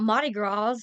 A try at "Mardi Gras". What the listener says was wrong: It's Mardi. Mardi Gras. It's Mardi Gras. It's Mardi Gras. I know, but you said the first time you said it, you said Mardi. You didn't say the R.